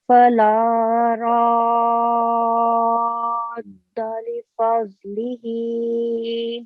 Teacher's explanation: راد دال پر تھوڑی آواز ٹھہرنی چاہیے تشدید کی وجہ سے